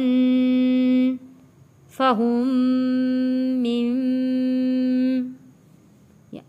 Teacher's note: میم تشدید پہ غنہ ادا کریں گے۔